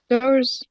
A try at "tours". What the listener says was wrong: Pay attention, pronunciation. This is tour. Tour. It's not tower.